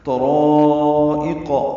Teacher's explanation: طرائق میں طا را دونوں پر ہیں، اس کا الف مدہ بھی پر ہے اور یہ مد متصل بنتی ہے، الف مدہ کے بعد حمزہ یا کی شکل میں ایک ہی کلمے میں آیا ہے۔